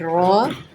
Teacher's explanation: را ہمیشہ پر پڑھا جاتا ہے جب اس کے اوپر زبر یا پیش آ جائے